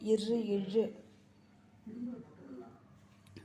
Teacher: மேல்வாயை நாக்கின் நுனி வருடுவதால் பிறக்கும் எழுத்துக்கள்